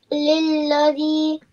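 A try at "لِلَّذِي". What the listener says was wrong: Lilladhi. Yeah, stretch the zi. Why are you shy of stretching? Ya mother rule, stretch the zi for 1 second.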